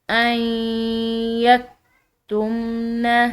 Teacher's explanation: حمزہ کے بعد جو نون ساکن ہے اس کے ساتھ ہم نے یا کو ملانا ہے، اس میں غنہ کو مدغم، اس میں غنہ بھی ملا کر ادا کرنا ہے